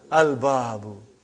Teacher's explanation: Moon letter. You did pronounce lam.